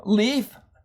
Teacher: your tongue touches the roof of your mouth and the air comes out around the sides